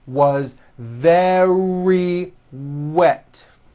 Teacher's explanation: very starts with a V sound followed by a strong R.